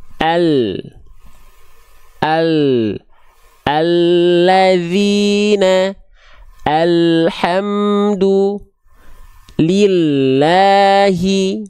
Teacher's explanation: tapi bukan seluruh samping lidahnya bukan seluruh samping atau sisi lidahnya hanya samping lidah atau tepi lidah bagian depan yang kanan dan tepi lidah bagian depan yang kiri keduanya menyusur sampai ke ujung lidah disentuhkan ke langit-langit bagian depan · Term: huruf lam